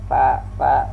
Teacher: Nah, fa ini per bibir bawah dengan gigi muka yang di atas, dan dia juga termasuk al-hamas, ada mengeluarkan udara di saat kita melafalkan huruf fa. Nah, dan fa ini sifat hurufnya rakhawah, berlalu, dan dia juga termasuk al-istifal dengan tidak mengangkat pangkal lidah.